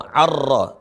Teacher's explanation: dileburkan suara Nun atau dihilangkan suara Nun masuk ke huruf ro Ar Jadi bukan an tapi